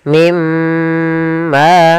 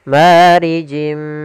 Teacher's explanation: Cara membacanya masukkan nunnya ke huruf mim dan kemudian ditahan dengan gunnah. Mimma. Kemudian pada lafal ma ada mad tabi'i. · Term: idgham bi gunnah